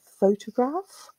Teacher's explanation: there are two distinct peaks of intensity on the first and third syllable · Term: stress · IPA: /ˈfəʊtəɡɹɑːf/